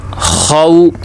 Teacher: آگے دیکھیں، واو لین ہے، کیونکہ واو ساکن سے پہلے زبر ہے تو لہٰذا واو لین ہے، تو لہٰذا اسے کھینچ کر نہیں پڑھیں گے